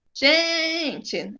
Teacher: é o gen que demora mais e é a mais forte. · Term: paroxítona